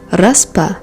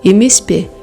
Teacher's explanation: after voiceless consonants, it is pa or pe